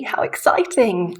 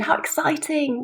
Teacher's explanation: how exciting with very high bright up down intonation